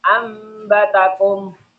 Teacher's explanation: cara bacanya dengung menjadi suara mim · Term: iklab